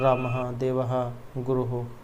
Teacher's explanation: इनका उच्चारण किंचित ह के सदृश किया जाता है और इसका भी प्रयोग स्वर के बाद ही होता है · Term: विसर्ग